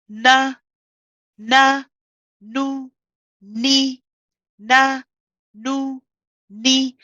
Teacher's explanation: the tip of the tongue touches behind the upper two incisors. Okay, so it is where the gums meet the upper teeth, the incisors, or the roots of the teeth. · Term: noon